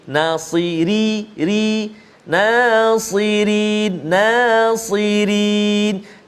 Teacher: Tapi sebelah dia huruf ra, kena hati-hati, ra baris bawah ataupun kasrah nipis, tarqiq